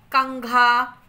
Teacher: अनुस्वार के उच्चारण में हवा नाक से निकलती है।